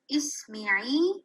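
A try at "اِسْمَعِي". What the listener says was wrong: No, it's not me. It's Isma. Meme is having a fatha. This will not change. Isma. Isma.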